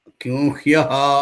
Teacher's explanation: ఇబ్బంది ఏమిటో సరే పోల ఇట్లాగ మనం కింహ్యః అంటే యకారము అనునాసిక యకారం మకార స్థానంలో అనునాసిక యకారం వస్తుందన్నమాట